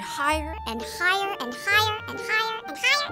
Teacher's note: speeding up your voice makes it sound higher and higher